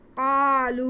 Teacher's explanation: قاف کی آواز کو ہم ایک الف کے برابر کھینچیں گے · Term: الف مدہ